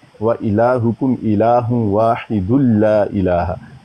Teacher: इदगाम बिला गुन्ना, कि उसमें नून की आवाज़ नहीं आती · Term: इदगाम कामिल